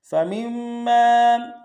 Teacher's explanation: میم کو آگے اگلے میم کے سامنے لانا، میم کے اوپر تشدید زور دیں گے ، اور میم کے ساتھ الف مدہ کا امتحان میں کھینچیں